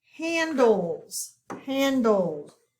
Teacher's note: we do not hear the e and it is a short a sound